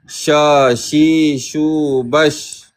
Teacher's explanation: syin bahagian tengah lidah dibawakan ke bahagian tengah langit keras